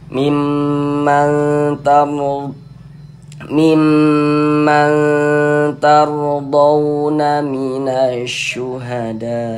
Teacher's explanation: Sebelum waw sukun ini ada harokat fathah. Huruf waw sukun yang sebelumnya ada harokat fathah, maka huruf waw sukunnya huruf lin juga. Ya, kita baca lunak ya, lembut saja.